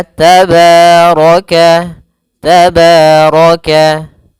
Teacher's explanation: Maka kita hukumi dengan bacaan yaitu mad thbi'i. Mad thabi'i panjangnya yaitu dua harakat